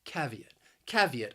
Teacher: the word has three syllables and the stress also it's on that first syllable